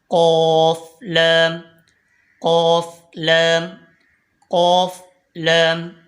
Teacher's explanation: कफ जबान की जड़ और तालू के नरम हिस्से से अदा होता है · लाम जबान का किनारा और आगे की दो दाढ समेत दांतों की जड़ से अदा होता है · قوف زبان کی جڑ اور تالو کے نرم حصے سے ادا ہوتا ہے